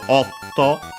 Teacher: it's a O with the small tsu as the abrupt end with a glottal stop